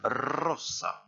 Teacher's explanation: le S entre deux voyelles se prononce se. Il n'y a pas de zozotement en espagnol.